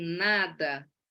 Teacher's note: o ar passa pela cavidade nasal, vindo do pulmão, passa aqui abaixa-se o véu palatino, o ar passa pelo nariz, o fechamento da cavidade oral se dá aqui na ponta da língua contra os alvéolos , e eu tenho, então, a produção do som N. Esse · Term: consoante N